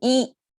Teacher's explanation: So 一 is the Chinese pronunciation. And it's flat tone.